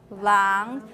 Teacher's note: From a low register going up. 狼. It's a low rising tone.